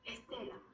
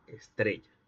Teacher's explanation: Hay una epéntesis del vibrante simple alveolar sonoro